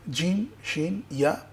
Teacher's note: জিহ্বার মাঝখান তালুর সঙ্গে লাগিয়ে জিম শিন ইয়া পড়তে হবে।